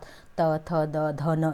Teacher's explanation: त वर्ग क्या होता है, तो यह दंत से बोला जाता है।